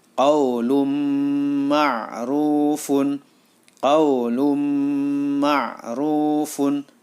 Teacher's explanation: bacaan Idgham Bighunnah karena ada tanwin atau dhommatain bertemu dengan mim maka suara tanwin masuk ke dalam huruf mim